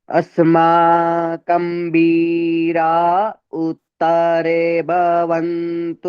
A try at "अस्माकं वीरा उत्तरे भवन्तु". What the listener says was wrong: सुनिए, जल्दी जल्दी नहीं बोलिए।